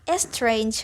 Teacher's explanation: spanish speakers who are starting to learn english as a second language will sometimes put a prosthetic vowel at the beginning of some english words